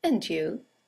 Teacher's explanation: and you is a statement it has a falling intonation and it's used to return the compliment or the greeting